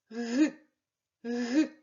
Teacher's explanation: кінчик язика опущений вниз а задня частинка торкається м'якого педнебіння А тепер перевірте горло чи працює г г г звичайно горло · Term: звук [Г]